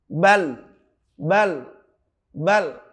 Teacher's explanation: Lam ini ketika dimatikan, ada huruf sebelum lam dimatikan seperti ba misalkan dikasih harokat fathah, kemudian lamnya dimatikan, maka menjadi kelihatan banget. Kelihatan benar bahwa ujung lidah kita akan menempel di langit-langit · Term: huruf lam